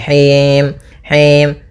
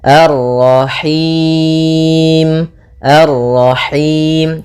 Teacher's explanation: Nah, ini masuk hidung, tapi enggak mau, dia lepas dari yang namanya masuk hidung dan juga lepas dari namanya imalah, yaitu harus kasrah sempurna